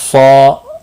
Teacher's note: صا الف مدہ ہے، ایک الف کے برابر کھینچ کر پڑھیں گے، صاد مستعلیہ بھی ہے، پر پڑھا جائے گا